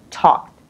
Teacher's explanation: So you have ed at the end, and because k is unvoiced, then you can hear the sound of t, not d